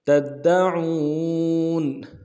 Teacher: به تدعون، تا کو دال کے ساتھ ملانا ہے، دال کے اوپر تشدید زور دیں گے، اگلے دال کو نرم سے ادا کریں گے۔ عین کو واؤ کے ساتھ ملانا ہے، واؤ مدہ ایک مقدار میں کھینچیں گے، نون کو نرم سے ادا کریں گے۔